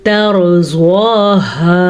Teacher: अब रॉ को पुर पढ़ने के लिए बाज़ लोग ता को भी पुर पढ़ लेते हैं, यानी तौर पढ़ लेते हैं, नहीं तैरो तरज़वाहा। ज़्वाद को पुर पढ़ें क्योंकि ज़्वाद हमेशा ही पुर पढ़ा जाता है